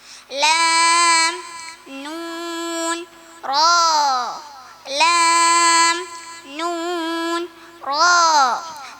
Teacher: നാവിൻ്റെ അറ്റവും മേലെ മുൻപലകളുടെ ഊനും